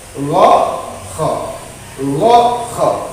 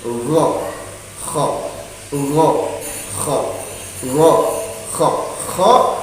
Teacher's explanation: tempat makhorijul huruf yang ketiga itu berada pada tenggorokan atas, yaitu huruf ghain dan kha